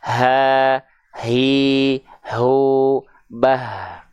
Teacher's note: Atau misalnya kita praktekkan terhadap huruf hams yang lain, yaitu huruf H besar. Tuh, huruf H besar dia juga punya sifat hams. Tapi kadarnya hanya berupa aliran nafas saja. Aliran nafas, bukan hanya percikan.